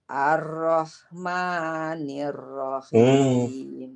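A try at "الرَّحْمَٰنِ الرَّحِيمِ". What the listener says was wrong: Enggak. Langsung. Ar-Rahmanir. Langsung masuk ke ro.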